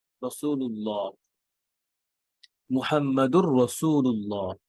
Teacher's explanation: এই ফাতহা আহ আল্লাহ ওয়ার্ডটা হেভি হবে, আল্লাহ ওয়ার্ডের লাম, আল্লাহ শব্দের লাম হেভি হবে, ভারী হবে